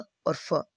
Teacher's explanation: व और फ बोलकर देखेंगे तो दांत और होठों से बोले जा रहे हैं, व और फ, ठीक है ना, तो ये दंतोष्ठ है, बिल्कुल सही बात है।